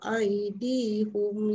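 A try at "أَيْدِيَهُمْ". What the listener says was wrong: Kenapa tak baca ya? Aydiyahum.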